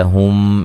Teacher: ہم میم ساکن کا ادغام ہے، ٹھیک ہے، غنے کے ساتھ پڑھیں گے